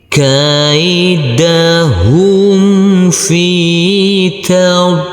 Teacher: Huruf lam yang berkasroh ini bertemu dengan huruf ya sukun, maka huruf lamnya kita baca panjang dengan panjang 2 harokat